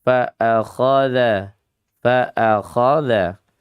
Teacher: فَأَخَذَهُ Fanya rokhawah, anya syiddah, khanya satu rokhawah, dua isti'la, tebal dia. Ya, tiga dibacanya tafkhim, tebal. Isti'la tinggi lidahnya dinaikkan.